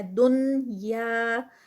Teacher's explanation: تو یہاں پر جو رول کے حساب سے ہے، یہاں پر اخفا ہونا چاہیے، لیکن ہم اخفا نہیں کر رہے، ہم بلکہ نون کو پڑھ رہے ہیں۔ اخفا میں تو ہم نون کو ہائڈ کر لیتے ہیں نا، تو یہاں پر نون کی ساؤنڈ ہم نے دینی ہے